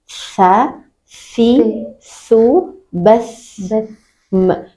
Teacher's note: Maka sa ada dua yang mengalir, suara dan nafas.